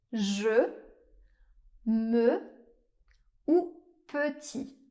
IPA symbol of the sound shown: ø